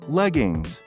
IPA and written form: ˈlɛgɪŋz (Leggings)